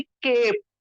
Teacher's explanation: जैसे कि हमने किया था CAP कैप होता है, लेकिन जब इसी के आगे ई लग जाता है तो ये ए और ई दोनों वॉवेल्स के बीच में जब कॉन्सोनेंट आता है तो हम इसको पहले कैप पढ़ रहे थे, लेकिन जब ई आ जाएगा तो ए की आवाज बड़ी हो जाएगी, लंबी हो जाएगी, ए। तो हमने फिर इसको, और ई साइलेंट हो गया था तो इसको हमने केप ऐसा पढ़ा था, केप, है ना।